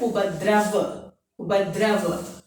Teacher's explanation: Then V A Va, Upadrav. And अंतिम व्यंजन जो है अकारांत व्यंजन जो है उसका उच्चारण आधा ही होता है, भले ही इसके साथ आ का प्रयोग हो तो भी उसका उच्चारण आधा ही रहता है, इसलिए उसका उच्चारण उपद्रव उपद्रव, ऐसा होता है। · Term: half pronunciation